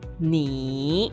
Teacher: Third tone is a falling and rising tone. Start at a neutral tone, then dip to a lower pitch before ending at a higher pitch. · Third tone actually is a super low bass tone, or I call it as a burp tone.